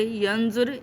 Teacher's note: نون کو ہم نے غنہ کیا کیونکہ آگے زوا آ رہی ہے، یعنی اخفا کر دیا، ٹھیک ہے، یہ کیا کہتے ہیں، پوشیدہ کر دیا نون کو، نون غنہ کی ساؤنڈ نکالی۔